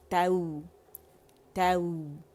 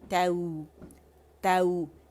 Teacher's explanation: ایک تو نرمی سے اس میں رخاوہ ہے، آواز چلتی ہے